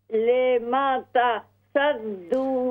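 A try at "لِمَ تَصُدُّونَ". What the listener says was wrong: سواد پر پیش پڑھیے. آپ کو میں 2-3 دفعہ بتا چکا ہوں. سواد پر پیش پڑھیے. یہاں پر لما تصدون صاد دال پیش صد. صاد کے اوپر آپ پیش پڑھیے. لما تصدون لما تصدون.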